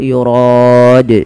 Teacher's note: kita ambil yang tengah-tengah ya yurod Kemudian pada lafal Dal ini wajib dipantulkan karena dia dalnya menjadi Dal yang sukun atau dinamakan dengan bacaan Qalqalah